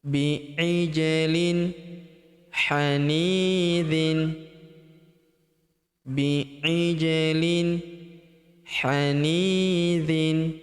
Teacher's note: huruf ni kita panjangkan 2 harokat karena terdapat ya sukun di depannya